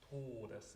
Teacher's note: nice closed, like almost an U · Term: closed vowels